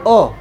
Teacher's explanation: अ बोलिए। अ बोलते हैं डायरेक्ट साउंड अंदर से निकलता है। उच्चारण स्थान कंठ हो जाएगा।